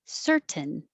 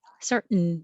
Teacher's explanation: You can say perfectly with a T, certain, or make it just shorter, certain, certain, just hold the N.